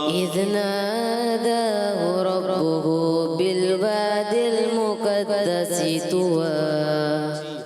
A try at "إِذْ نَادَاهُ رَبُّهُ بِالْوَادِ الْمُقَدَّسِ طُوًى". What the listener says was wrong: سان بھائی اذ ناداہ، اذ پڑھیں گے تو کلکلا ہو جائے گا، دوبارہ پڑھیں بغیر کل کریں گے. اذ ناداہ ربہ بالواد المقدس طوى،